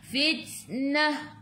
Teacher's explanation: Ta ada sukun kena ada angin sikit saja. Sifat huruf ta hamas.